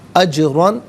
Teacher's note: علا علیحدہ ہے، ہی علیحدہ ہے، ملا کر پڑھیں گے علیہ۔ اجرن، جیم ساکن ہے لیکن حرف قلقلہ ہے تو آواز لوٹتی بھی محسوس ہونی چاہیے، را پر دو زبر کی ترمیم پر کر کے پڑھا جائے گا۔